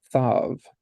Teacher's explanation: the the plain s Tav with a digesh has the plosive without the dagesh it's going to have the fricative the th sound